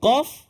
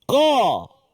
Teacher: qaf tu kalau kita tengok tempat keluar dia ialah di pangkal lidah, bukan hujung lidah, dia pangkal dalam sekali kan.